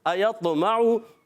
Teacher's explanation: हमज़ा की अदायगी हलक के नीचे वाले हिस्से से अदा होती है। हमज़ा और हा ये दोनों हलक के नीचे वाले हिस्से से अदा होते हैं।